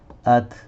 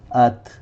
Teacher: یہ تا اور کیف ایک دو ایسے لیٹر ہیں جس پر ہم رکتے ہیں تو تھوڑی سی ہسنگ سی ساؤنڈ آتی ہے. ات، یوں اس کو ات نہیں پڑھنا ہے، ات نہیں پڑھنا ہے.